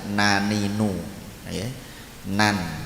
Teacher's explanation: ujung lidah mengenai gusi gigi depan atas huruf nun